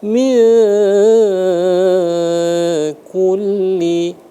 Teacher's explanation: Bunyinya disamarkan antara nun dengan kaf. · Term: ikhfa